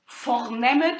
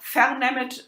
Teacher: the weakening of the unstressed syllables isn't as strong in Thuringian as it is in other dialects